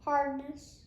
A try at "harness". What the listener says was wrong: No, I hear the D.